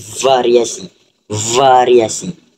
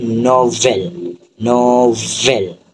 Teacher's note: Geseran bersuara adalah geseran bibir dan juga gigi yang akan mengeluarkan bunyi ver v.